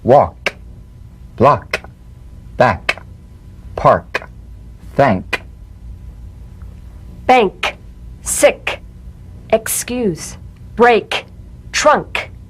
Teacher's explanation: let the tongue spring away in the soft, unvoiced click of the K drum beat. Feel a crisp tap and a pulsation in the back of the tongue. · Feel a crisp tap and a pulsation in the back of the tongue. Tap the K drum beat in these words.